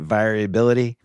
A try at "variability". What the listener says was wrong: And then he tries to say variability with no R.